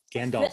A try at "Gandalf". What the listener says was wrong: The L is not silent. There are so many silent L's. Gandalf.